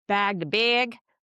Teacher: people that tend to use more Northern cities shifted vowels or sort of the /bæg/-/beɪg/ kind of vowel